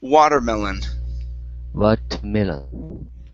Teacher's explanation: All right, let's go to the word watermelon. So our stress is at the very beginning. Instead of putting it at the end, okay, this is watermelon.